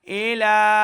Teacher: لام کے اوپر کھڑا زبر اور مد ہے, تو ہم نے لا کو لمع کر کے پڑھنا ہے